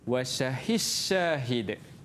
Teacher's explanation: Dal tu hilang. Masukkan ke dalam shin, jadi shin. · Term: mutaqariban